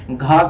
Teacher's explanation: घ का उच्चारण स्थान जो होता है कंठ होता है।